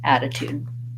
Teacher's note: it has first syllable stress so long short short attitude same thing for gratitude just add the gr at the · So even though this is in real life is spelled with T's in writing, we say it more like a D, and it has first syllable stress, so long, short, short, attitude